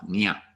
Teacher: The tilde over the N after the J indicates that the N sound will have some body English to it, nya, and it'll be pronounced with the middle of your tongue up against kind of the middle to back of the roof of your mouth, nya. So it's kind of a nasal sound.